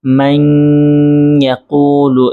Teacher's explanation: এই শব্দটা মূলত ছিল মান ইয়াকুলু, কিন্তু এখানে উচ্চারিত হবে মান ইয়াকুলু, এই যে গুন্নাহ করতে হয়েছে কেন? নুন সাকিনের পরে ইয়া আসছে, এজন্য গুন্নাহ করতে হয়েছে